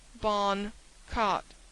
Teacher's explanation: the Boston accent is very crisp and in places suggestive of the best English but the vowels are so curiously flattened